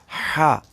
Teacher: ہا، یہ وسط حلق یعنی حلق کے درمیان سے ادا ہوتا ہے یہ ہا۔ اور خا جو ہے یہ ادنی حلق سے یعنی گلے کے اوپر والے حصے سے خا ادا ہوتی ہے۔